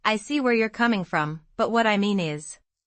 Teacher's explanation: stress see and coming in I see where you're coming from. · And in what I mean is, stress mean to highlight the correction.